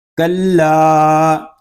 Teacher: کلا اس کو ہم ایک الف تک کھینچ کر پڑھیں گے کیونکہ یہاں پہ الف مدہ ہو رہا ہے. الف سے پہلے زبر آ جائے تو الف مدہ ہوگا.